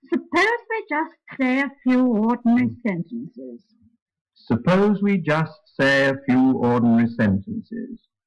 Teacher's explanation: it starts quite high on the second syllable of the word suppose and falls in steps